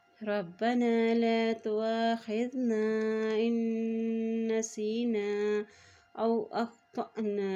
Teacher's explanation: حمزہ کے اوپر مد ہے تو اس کو لمبا ادا کریں گے